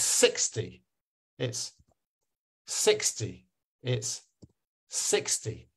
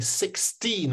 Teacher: if I'm hitting at the second syllable it means it's teen